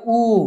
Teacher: संवृत्त स्वर उ म्हणजे तोंड बारीक होत आहे